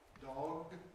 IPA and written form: dɒg (dog)